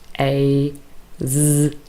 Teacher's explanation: A, z, very clear vibration. Those are voiced sounds.